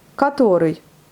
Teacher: on dit A alors que ça s'écrit en O, mais puisqu'il n'est pas accentué, donc on le lit en A.